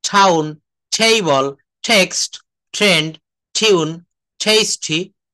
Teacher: টি, টি এর উচ্চারণটা ট না হয়ে ঠ এর মতো করতে হয়।